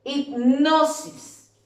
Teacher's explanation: La sílaba tónica es la sílaba no.